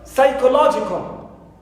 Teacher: So I have ko is number 1, it's not, and psi is the second syllable for the primary stressed syllable. So psi is the syllable which takes the secondary stress. · law is the stressed syllable which takes the primary stress. So I count 2 syllables before it.